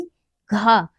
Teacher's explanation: यह कंठ कंठ से उच्चारित होता है। · ये इसका जब हम उच्चारण करेंगे तो हमारी जीभ जो है वो तालु से नहीं टकराएगी। घा जो हमारा है वो क्या है, ये कंठ से, कंठ से उच्चारित होता है। इसका उच्चारण स्थान क्या है, कंठ है।